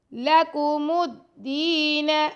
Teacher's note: لام اور کاف کو لمبا نہیں کرنا، میم کو دال سے ملانا